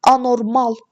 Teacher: Anormal sonuncu hecəyə düşür. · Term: vurğu